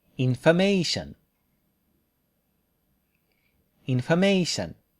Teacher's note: The English word has a minor stress on in and major stress on may.